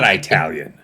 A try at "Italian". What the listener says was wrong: It is emphatically not Italian. Italian. Italian. It is the short I sound, not the long I sound.